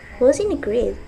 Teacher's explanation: It's making a comment, so you can pronounce it with falling tone.